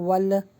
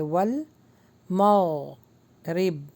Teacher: ول یہاں پہ bounce back نہیں کرنا جیسے ول نہیں. ول لام کے مخرج پہ زبان کو روک لیجئے